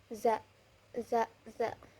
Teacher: adanya gesekan terus bersuara tipis dan berada di ee di antara ujung lidah dan gigi